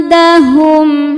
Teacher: Cara bacanya nun dibunyikan samar-samar menuju dal disertai dengungan. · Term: ikhfa hakiki aqrab